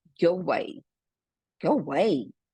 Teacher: Porque se eu falar só a palavra away, ele vai ter som de A, away. Mas quando tiver com go antes, go away, a gente praticamente ignora esse A. Ele vai ficar com som já como se o W tivesse som de U, né?